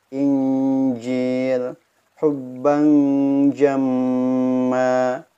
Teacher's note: Huruf jim dan juga huruf shin ini keluarnya di tengah lidah, maka fokuskan suaranya di tengah lidah.